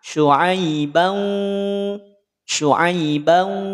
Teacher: Karena hurufnya waw ya. Dengungnya tak sempurna. Di saat kita bunyikan, kemudian kita tutup hidung kita, maka tetap akan berbunyi. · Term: bigunnah